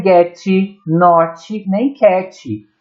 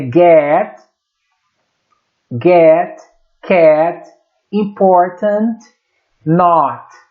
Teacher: esse T não tem uma vogal no final. Ele é um T muito sutil e pouco audível.